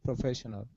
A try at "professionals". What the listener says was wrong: Give me an S there. So it's professionals.